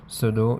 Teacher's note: واو ساکن اس سے پہلے پیش، صدو اس میں حروف مدہ میں سے ہے، ایک حرکت تک اس کو لمبا کریں گے۔ صدور الناس میں را کو باریک پڑھیں گے، را کے نیچے زیر ہے۔